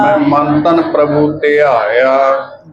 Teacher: ਹੁਣ ਇੱਥੇ ਮੈਂ ਸ਼ਬਦ ਨਾਸਕੀ ਹੈ ਜੀ